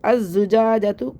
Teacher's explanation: ساتھ پڑھنا ہے، الزجاجۃ، الزجاجۃ، الحمزۃ الوصل کو چھوڑ دیں گے، حمزہ کو زا سے ملا کے پڑھ دیں گے